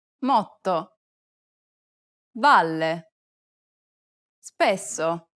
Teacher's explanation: double consonants are actually pronounced for a longer duration in Italian than they are in English. To solve this problem, try to lengthen the sound a little bit longer than you would in English.